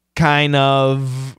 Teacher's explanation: the N is a strong sound. It's going to kill the D. It's gone. Kills it completely.